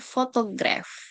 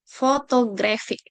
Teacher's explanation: Stress on first syllable, photograph, versus photographic. Stress on third syllable, longer duration there.